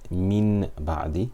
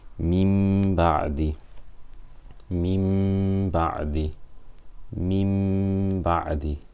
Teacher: So that means this Noon Sakina will be read as a Meme Sakina with Ghunna for 2 harakat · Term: Iqlab